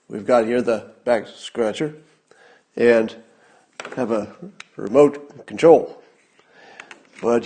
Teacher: listen to how he finishes on a confident low note